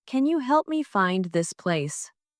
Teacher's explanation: Stressed words are help, find, and place.